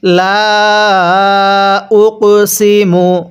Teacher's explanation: অবশ্যই কফটা ধাক্কা দিয়ে পড়বেন, এটা কলকলার হরফ।